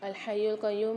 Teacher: الحی القیوم میں یا پر مشدد ہے، یہاں پر سختی اور جماؤں کے ساتھ پڑھیں گے یا کو لام کے ساتھ ملا کے۔